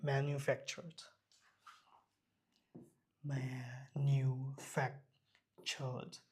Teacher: Manufactured. এখানে আরের যে উচ্চারণটা সেটা এখন নাই।